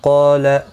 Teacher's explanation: قاف مستعلیہ ہے اس لیے پر پڑا جائے گا، اس کے ساتھ الف بھی آیا ہے، یہ بھی پر پڑا جائے گا.